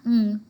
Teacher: um which is pronounced from the velar region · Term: nasals